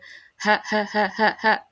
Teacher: Kemudian yang keempat adalah infitah. Infitah itu adalah terbukanya ee jalan keluar huruf sehingga suaranya tipis gitu ya.